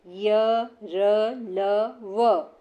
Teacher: जिन वर्णों के उच्चारण के समय जीभ मुंह के किसी भी भाग को पूर्णतः स्पर्श नहीं करती, वो है अंतस्थ व्यंजन।